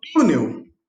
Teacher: sílaba tônica é o tu, e termina com L, então o U tem acento.